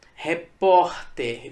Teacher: Veja que a sílaba tônica é o por, não é o ter, é o por. Não é a última sílaba, é a penúltima sílaba, por isso que ela é uma palavra paroxítona.